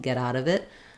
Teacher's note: But same thing, if I'm saying get out of it, I'm even going to link my V to my next vowel